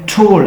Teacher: आपकी tip of tongue फॉरन tip अलविलर ridge को touch करेगी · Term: अल्विलर साउंड